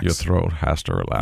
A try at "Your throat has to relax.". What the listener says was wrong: You're doing something, but you're doing something with your S. He doesn't have esh. He doesn't have that esh.